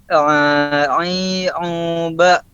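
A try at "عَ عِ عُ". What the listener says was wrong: Ulangi, masih ke hidung itu. A I U U. Masih ke hidung.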